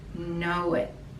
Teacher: there's no t pronunciation just stop the tongue at the top of your mouth